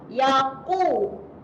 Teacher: Jangan bunyi dengan bunyi huruf kaf Yaqu, huruf qaf ni tebal.